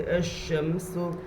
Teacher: الف لام اگر حروف شمسی کے شروع میں ہو تو الف لام اگر حروف شمسی کے شروع میں ہو تو الف اور لام کو نہ پڑھیں گے. الف اور لام کو نہ پڑھیں گے بلکہ بعد والے حرف سے ملا کر پڑھیں گے